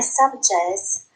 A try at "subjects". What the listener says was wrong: Subjects. Not jets. Subjects.